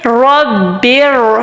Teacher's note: पिछला जो वर्ड आ रहा है उसके लास्ट लेटर पे जेर आ रही है, सो हमने रॉ को मोटा अदा करना है।